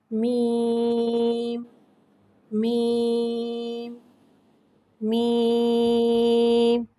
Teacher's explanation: मीम को एक अलिफ यानी 3 हरकत के बराबर खींच के पढ़ते हैं। मीम हुर्फ़े शफ़ाविया है, मीम दोनों होठों के खुश्क हिस्से से अदा होता है और मीम को नीचे इदाते में अदा करके पढ़ेंगे।